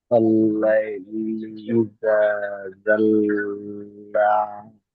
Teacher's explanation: জি, আলিফ মাদ্দার সমতুল্য। তাহলে খাড়া জবরকে এক আলিফ টান দেন।